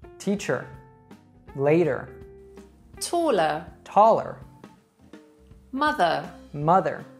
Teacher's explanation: Another big difference between British and American English is the final schwa sound in words like teacher or later.